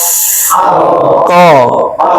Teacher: pangkal lidah paling belakang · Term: Qof